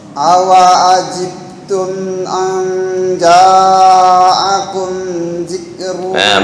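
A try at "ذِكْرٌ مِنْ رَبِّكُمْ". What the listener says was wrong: Bukan zik tapi zi. Bukan zikrun.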